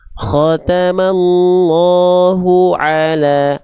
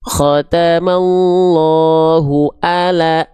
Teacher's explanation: Ya, tapi kalau kita baca khatamallahu ala, nah itu kesalahan yang bukan main. Karena teman-teman mengganti huruf ain menjadi huruf apa? Menjadi huruf hamzah.